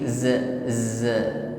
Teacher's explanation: Ucapkan dengan sifat yang menyertainya asofir ya ada bunyi desis di situ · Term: huruf Za